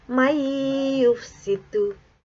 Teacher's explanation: dengan memasukkan huruf nun sukun atau tanwin ke dalam huruf berikutnya dengan dengung. Tulisan man yufsidu dibaca may yufsidu. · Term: idgham ma'al gunnah